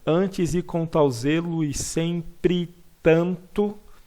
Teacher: Como são o mesmo som, uma das vogais acaba se enfraquecendo ao ponto de desaparecer. E fica parecendo que eu pronunciei apenas uma delas. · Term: crase poética